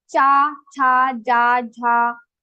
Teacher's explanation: So all these cha group varnas will be pronounced from your talu.